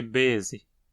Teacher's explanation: a elisão de um hiato, como baese, alonga a vogal que sobra, tornando-se bese